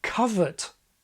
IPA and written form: kʌvə(r)t (covert)